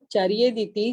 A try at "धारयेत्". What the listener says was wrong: इसका मतलब ये है चार्यत नहीं है, ये धारेत देती।